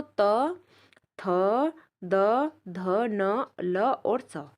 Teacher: हमारी जो जीभ है वह बोलने में दांतों को स्पर्श करती है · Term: दंत वर्ण